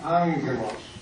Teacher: Two gamma, you have the first one like an ng. OK， 因为你看到有2个伽马，对不对啊？但2个伽马的时候，第一个伽马的发音就是 ng 的发音，英文的。